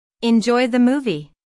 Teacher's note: notice how the intonation Rises on movie this is said in a friendly way